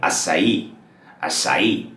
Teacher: The emphasis on the last syllable, which is the E sound